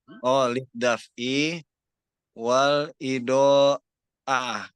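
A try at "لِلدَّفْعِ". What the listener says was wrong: Apa bukan lid daf'i ya, lid dif'i. Nah, ini kita cek di kamus, ternyata dalnya kasroh. Dif'i. Bukan daf'i, tapi dif'i. Lid dif'i wal idoati.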